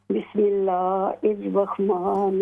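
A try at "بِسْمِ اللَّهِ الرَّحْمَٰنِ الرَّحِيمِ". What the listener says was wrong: بسم اللہ الرحمن الرحیم. ہا کو کلیئر کریں، بسم اللہ، ہا ہے یہاں پر،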